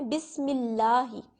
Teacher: اب اگر اللہ تعالیٰ کے نام سے پہلے زیر آ گئی ہے تو آپ اس کو موٹا نہیں کریں گے.